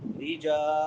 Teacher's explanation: रा के नीचे जेर है तो रा बारीक होगी